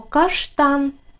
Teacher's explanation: ш приголосний твердий Т приголосний твердий а голосний н приголосний твердий слово складається з двох складів наголос падає на другий склад